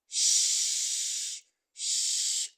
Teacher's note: speech sounds that are produced just behind the alveolar ridge. So we have sh, sh, as in shoe, as in shirt, as in shower. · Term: post-alveolar sounds